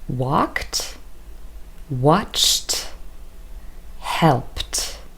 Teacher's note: where ed spelling is represented through t unvoiced consonant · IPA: /t/